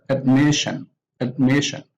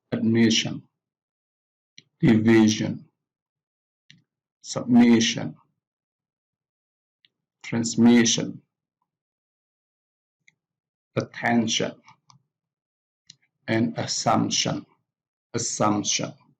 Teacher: the stress is on the syllable before the suffix on the second syllable from the last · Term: penultimate syllable